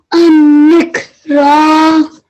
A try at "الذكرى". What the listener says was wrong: It's a zal. So az-zikra.